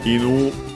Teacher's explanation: accent on the last syllable on its own